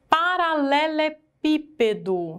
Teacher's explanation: Porque a antepenúltima sílaba é a sílaba mais forte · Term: proparoxítona